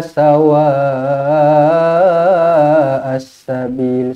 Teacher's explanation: Mad wajib muttasil, sawa 4 atau 5 harakat.